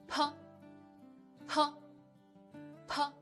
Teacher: Close your mouth and open it quickly. You can feel the obvious airflow when opening your mouth at the same time. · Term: initial p